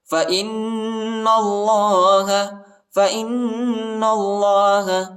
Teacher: نون کو لام کے ساتھ ملائیں گے اور اللہ کے نام کو موٹا پڑھیں گے